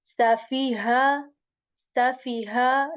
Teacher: The ha at the end comes from the lower portion of our throat.